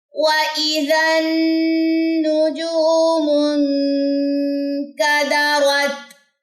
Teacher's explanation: تا میں ہمس ہوتی ہے اور تا پہ آپ سٹے کریں گے، تا کی جزم پہ. · نون مشدد کا غنہ کریں گے، 2 سیکنڈ کے لیے رکیں گے، ناک میں آواز لے کے جائیں گے اور اس پیش کو ہم نے لمبا نہیں کرنا.